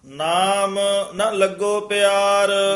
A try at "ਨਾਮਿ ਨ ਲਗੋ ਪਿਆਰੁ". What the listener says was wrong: ਨਾਮ ਪਦ ਤੇ ਵੀ ਯਮਕ ਲਾ ਕੇ ਉਚਾਰਨ ਕਰਨਾ।